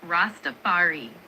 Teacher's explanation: The emphasis is on the second part of the word on that fa sound.